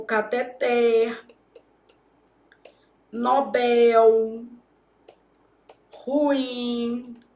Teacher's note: Elas podem ser oxítonas. Isso significa que a última sílaba é tônica.